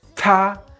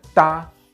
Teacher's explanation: amount of air that is released when we produce the sound ta is aspirated and da is unaspirated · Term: aspiration